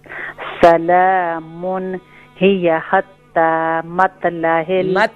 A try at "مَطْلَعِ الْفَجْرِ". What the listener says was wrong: مت نہیں ہوگا یہاں طوا ہے نا. طوا موٹا ہوگا. फज्र।